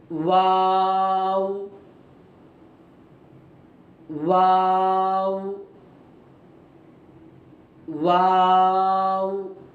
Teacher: मुकम्मल पूरे होंठ बंद नहीं होंगे, किनारे मिलेंगे, बाहर के हिस्से से वाव अदा होगा। तो वाव की अदायगी में मुकम्मल होंठ आपस में नहीं मिलते हैं। · तो जब अदायगी के वक्त किनारे मिलेंगे, मुकम्मल होंठ आपस में नहीं लगेंगे, बंद नहीं होंगे। तो वाव की अदायगी के वक्त में होठों के किनारे लगेंगे और होठों का जो शेप होगा वो ओ की शेप में होगा। देखिए, वाव, वाव, वाव।